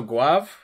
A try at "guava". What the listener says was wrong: Guava. Guave would be like French or something.